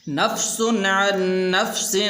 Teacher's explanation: نفس یہاں پر غنہ نہیں کریں گے اس لیے کہ آگے عین حروف حلقی میں سے ہے